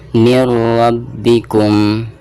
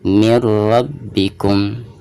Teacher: Dan huruf ro ini termasuk idgham bila gunah. Nah, jadi memasukkan nun sukun ke huruf ro-nya itu tanpa ada gunahnya. Jadi cukup ditasydidkan, cukup dimasukkan ke huruf ro saja, seperti itu ya.